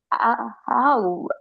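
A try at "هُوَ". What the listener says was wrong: ஓ ஓ ஆ அல்ல ஹூ.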